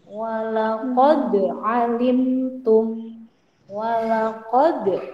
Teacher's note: Nah, walaqad dalnya dipantulkan, itu namanya qalqalah. Sampingnya itu huruf qalqalah to.